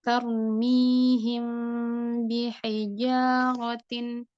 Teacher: ketika ada mim sukun bertemu dengan huruf ba, setelahnya ada huruf ba, maka itu adalah ikhfa syafawi dan bacaannya samar atau digunnah.